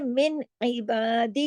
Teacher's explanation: من پورے اظہار کے ساتھ پڑھا, ادھر کوئی غنہ ونہ نہیں کیا